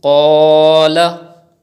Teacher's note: In this word, you have to read qaf with thick tone and you have to read alif, madda by stretching up to 2 harakat.